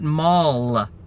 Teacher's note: we say email with the dark L